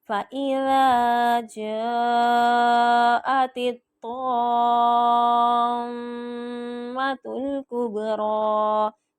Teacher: طام کے میم کے اوپر میں غنہ کر رہی ہوں کیونکہ نون اور میم پہ تشدید آئے تو غنہ ہوتا ہے